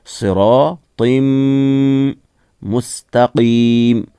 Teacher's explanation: इसे मीम के साथ मिलाकर जब पढ़ेंगे तो कायदा है कि जब 2 ज़ेर, 2 ज़बर, 2 पेश यानी तनवीन के बाद या नून साकिन के बाद अगर यूमिन जो 4 हुरूफ हैं या, वाव, मीम, नून, उनमें से कोई हर्फ आए तो उस वक्त वहाँ इदगाम होता है, यानी मिलाते हैं नून साकिन और तनवीन की आवाज़ को इन हुरूफ में, और साथ साथ में वहाँ गुन्ना भी होता है, नाक से भी पढ़ेंगे। सिरातिम मुस्तकीम, मुस्ताकीम, ता खींचेंगे नहीं, मुस्तकीम, क़ाफ़ है मोटा पढ़ेंगे, और मीम यहाँ साकिन होगा वक्फ करने रुकने की सूरत में।